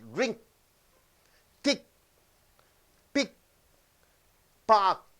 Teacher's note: the sound K doesn't go on continuously it stops